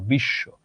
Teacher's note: যেমন ধরো এখানেও আছে তালব্য শ এর সঙ্গে, তালব্য শ দুইবার উচ্চারিত হলো